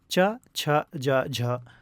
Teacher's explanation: ये स्पर्शी व्यंजन के अंतर्गत भी आते हैं और संघर्षी व्यंजन के अंतर्गत भी आते हैं। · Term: स्पर्शी और संघर्षी व्यंजन